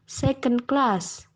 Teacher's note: primary stress is on the second word and secondary stress is on the first word